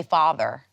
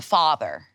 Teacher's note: So this vowel is a low back, either unrounded in accents with the merger or rounded in accents without the merger